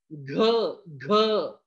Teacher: पहा बरं पहा घ घ पहा मित्रांनो हा जो आहे ना हा घ चा उच्चार करताना जो आहे हा ह त्याच्यात मिसळून येत आहे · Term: महाप्राण, मृदुवर्ण